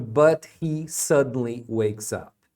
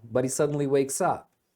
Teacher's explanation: é comum eles emendem o but e o He e pronunciar budy